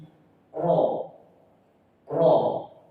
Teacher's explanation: Ada gemanya, kemudian lidah bagian belakang diangkat.